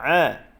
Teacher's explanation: huruf ain pertengahan kerongkong